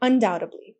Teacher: We don't pronounce that B, it's completely silent